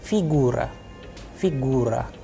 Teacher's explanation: in this specific case you can see the udarenie is on U